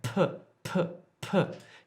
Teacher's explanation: you can actually feel the air hit your hand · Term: aspirated consonants